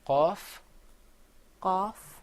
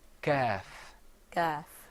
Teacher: the qaf sound comes way back in the very back of your throat. You're going to bring the sound on the soft palate way, way, way back near your throat.